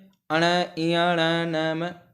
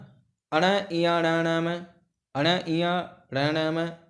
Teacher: इनका उच्चारण करते समय वायु मुख से नहीं, नाक से निकलती है, तो इस प्रकार के व्यंजन को नासिक्य व्यंजन कहते हैं।